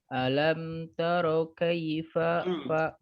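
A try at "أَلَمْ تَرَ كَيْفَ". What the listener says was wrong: Jangan taro. Tipiskan ta-nya. Taro. Hati-hati ya, taro. Tidak boleh taro lah. Taro. Alam taro kaifa alam taro ya.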